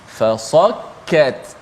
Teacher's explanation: Fa nipis, sad dia yang tebal kat situ